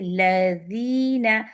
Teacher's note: ذال کی tip of the ٹنگ نیچے کے 2 دانتوں کے سرے پہ لگ رہی ہے, ذال کے اوپر کسرہ ہے, یا بھی آپ کی جو لائٹی ہے تو بہت خوبصورتی سے لذینا, جتنا ٹپ لگائیں گے ذال لائٹ ہوگی, ٹپ سے موٹا حصہ لگائیں گے, لذینا وینا ایسے کریں گے.